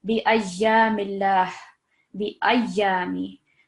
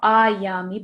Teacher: you want to put stress on the ya definitely because there is the shadda there, and you want to prolong it for 2 seconds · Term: ya mushaddad